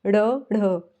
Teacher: मुर्धा बोलते हैं और फिर झटके के साथ नीचे को आए मुर्धा को स्पर्श किया फिर एकदम से नीचे को आए · जिनके उच्चारण में जीभ पहले ऊपर उठकर मुर्धा कोष पर करे जीभ क्या करेगी पहले ऊपर जाएगी मुर्धा को जो मुलायम भाग है उसको स्पर्श करेगी उसको मुर्धा बोलते हैं और फिर झटके के साथ नीचे को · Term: उत्क्षिप्त, द्विगुण व्यंजन